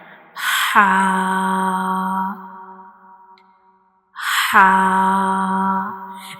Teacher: Our throat has three portion bottom, middle and upper portion and ha is pronounced from the middle part of the throat. Ha is pronounced from the middle part of the throat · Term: throat letter